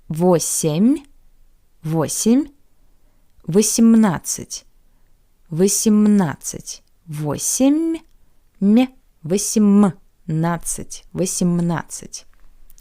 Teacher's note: in the numbers from 15 to 19, since the soft sign is cut off, the preceding consonant becomes hard